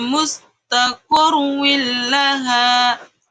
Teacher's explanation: idgham bila gunnah ini bacanya melebur menjadi satu dan tidak berdengung